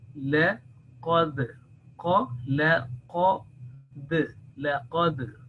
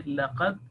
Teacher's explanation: If we say laqad, so you are killing the voice there, but it should be, there should be a slight echo, soft echo should come out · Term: jerking sound